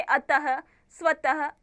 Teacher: विसर्ग जो होता है वो वर्ण के बाद लगता है पीछे, जिसका उच्चारण ह के समान होता है, जैसे अतः, स्वतः आदि।